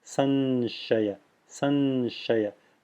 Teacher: the Anusvara should be formed with the palatal nasal sound, which is nya.